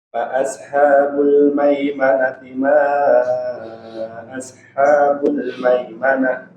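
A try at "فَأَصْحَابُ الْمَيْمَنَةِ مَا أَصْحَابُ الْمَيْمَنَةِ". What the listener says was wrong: Sedikit lagi huruf shad agak ditebalkan. Fa ashabul maimanati ma ashabul maimanah.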